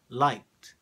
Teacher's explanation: this combination of the K and the Ed ends in a t